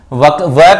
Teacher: वकार का जो उच्चारण स्थान होता है वो दांत और ओष्ठ दंतोष्ठ की सहायता से किया जाता